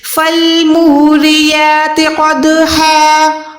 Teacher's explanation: فالموریات قدحا، قاف یہاں پر موٹا ہے، 2 نقطوں والا قاف کو ہمیشہ موٹا رکھیں گے، منہ کو گولائی کر کے